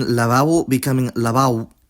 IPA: laˈβaβo becoming laˈβao̯β